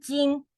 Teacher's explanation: 睛 is the even tone. So kind of like flat.